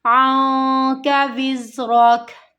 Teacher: इख्फा हो रहा है। नून की आवाज़ को हमें यहाँ पर छुपाना है क्योंकि नून साकिन के बाद अगला हरफ काफ है